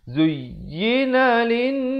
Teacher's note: Zuyyina lin, ya tekankan. Zuyyina lin dengungkan di sini wajibul gunnah. Setiap kali teman-teman jumpa nun sabdu ataupun mim sabdu di dalam Al-Quran, jangan lupa dengungkan 2 harakat.